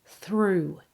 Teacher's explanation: This has a long oo vowel, just like in the word shoe.